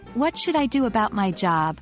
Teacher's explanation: and what should I do about my job the stress is on job